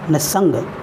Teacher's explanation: निह plus संग विसर्ग दंत स में परिवर्तित हुआ